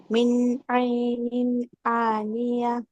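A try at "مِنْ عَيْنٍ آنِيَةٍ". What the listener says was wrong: മിന്നിന് കട്ട് ഇങ്ങനെ ഒരു smoothing കൊടുക്കരുത്, അപ്പൊ ഇൽഹാർ മാറും. മിൻ ഐനിൻ ആനിയ. മിൻ ഐനിൻ. അപ്പൊ മറ്റേതാവും.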